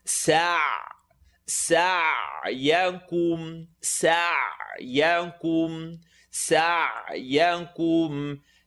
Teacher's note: Seen with a line on the top, sa, and then ayn, second part of the throat, so bite into it.